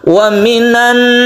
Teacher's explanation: membacanya guna karena dia menimbulkan tasjid nun sehingga dibacanya dengung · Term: idhar komariah